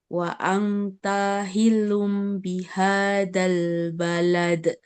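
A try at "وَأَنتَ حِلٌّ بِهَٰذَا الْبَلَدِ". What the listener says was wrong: Tipiskan lagi dengungnya di depan suaranya wa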